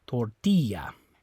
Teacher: now this one's the same rule ends with the vowel so the stress is going to be on this I the second last syllable